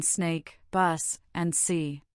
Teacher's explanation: The sharp hissings made by channeling air over the groove of your tongue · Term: unvoiced sound